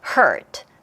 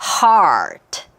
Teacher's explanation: heart. 그에 비해서 hurt는 그냥 입이 거의 입안에 공간이 없죠. 아까 heart는 입안에 공간이 굉장히 커요.